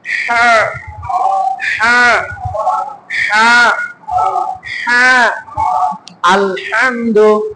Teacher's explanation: হলকের মাঝখান থেকে হা আর আইন, এই দুইটা অক্ষর উচ্চারণ হয় · হলকের মাঝখান থেকে, হলকের মাঝখানে চাপ দিবেন হা। এর সিফাত হলো সহজ, হা হা হা হা। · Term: হার মাখরাজ